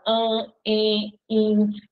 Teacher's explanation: As vogais no meio da palavra, diante de M e de N, vão ficar com o som nasal.